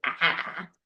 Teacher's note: it's a low vowel, but your tongue is forward